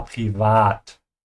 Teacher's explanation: Just make sure you pronounce the A with an open A